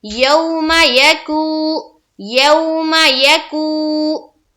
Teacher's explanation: پیش ہے، یعنی کہ واو مدہ بن رہا ہے، اور واو مدہ کو ہم ایک الف کے بقدر کھینچتے ہیں